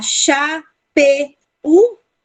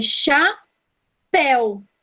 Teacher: Mas esse u, ele não é vogal. Ele é tido como uma semivogal.